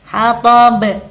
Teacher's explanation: Hatab jika kita wakafkan dinamakan bacaan qalqalah, jadi harus dipantulkan, ba-nya harus dipantulkan